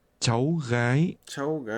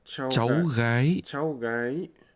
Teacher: This is pronounced with two rising tones.